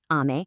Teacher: If you say it with a flat pitch, kind of like ame, it means candy.